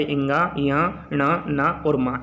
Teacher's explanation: इन्हीं वर्ण को अनुनासिक वर्ण भी कहते हैं क्योंकि ये नाक द्वारा बोले जाते हैं।